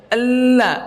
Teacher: maka suaranya keluar dari sampingnya, dari tenggorokan keluar dari kanan kiri. Itu namanya inhiraf namanya.